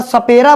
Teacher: स बोलने पे हमारा जो जीभ होता है, जीभ दांत को टच करता है